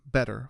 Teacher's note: In more formal British speech, the T stays crisp and clear, better, fully pronounced.